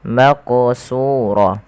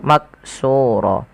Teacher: huruf q ini wajib dipantulkan ketika dia berharakat sukun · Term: Qalqalah, qalqalah